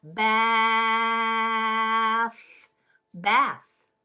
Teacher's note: That was the whispered TH sound, bath.